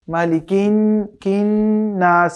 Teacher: এখানে নুনে 1 আলিফ পরিমাণ গুন্না করতে হবে।